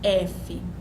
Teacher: Você observa que ao produzir a consoante, o lábio inferior toca no dente superior, nos incisivos superiores. Por isso que ela é chamada de lábio dental.